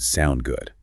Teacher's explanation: the rising sound in sound good makes it a question